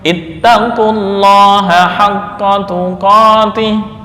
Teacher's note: Hasilnya adalah bacaan huruf qaf berharokat dhammah langsung bertemu lam tasydid karena lam didahului oleh dhammah. Maka lam pada lafal Allah dibaca tebal sesuai kaidah.